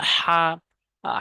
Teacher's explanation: হা হলকের মাঝখান থেকে চাপ দিয়ে উচ্চারণ করতে হবে।